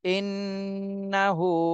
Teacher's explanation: ইন নুন জবর না ইন্না হা উল্টা পেশ হু ইন্নাহু তাহলে হরকতের বামে নুনে তাশদি ওয়াজিব গুন্না করতে হবে আর হাতে এক আলিফ টান দিতে হবে এখানে উল্টা পেশ রয়েছে